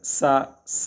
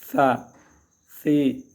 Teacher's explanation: زبان کو جب دانتوں کے نیچے سے لگائیں گے سیٹی کی آواز بالکل نہیں آ سکتی